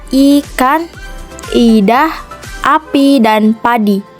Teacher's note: Contoh pemakaian vokal dalam bahasa Indonesia yang pertama, vokal I, tinggi atas depan tak bundar